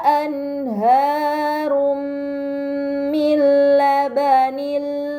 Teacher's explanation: anharum Min terdapat harakatah bertemu dengan huruf mim ini dinamak am maka dibaca secara melebur dengan gunah yang dipanjangkan